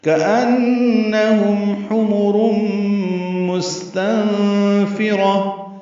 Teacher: حا وسط حلق سے ادا ہوگا. را پر ہے، تنوین کے بعد میم آنے کی وجہ سے حمرم ادغام ناقص مع الغنہ ہے.